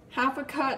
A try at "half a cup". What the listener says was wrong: Half a cut! That sounded like half a cut.